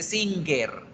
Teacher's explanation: especial chicos este es un sonido nasal puro o nasal cultural la lengua se nos va para la parte de atrás de la boca y hacemos este sonido también se puede producir cuando nosotros tapamos